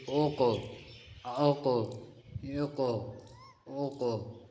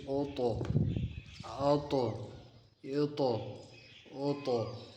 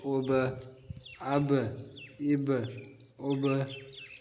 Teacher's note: قلقلہ کے معنی ہے ہلنا۔ جب یہ حروف ساکن ہوں تو ان کے مخرج میں آواز ہل جاتی ہے۔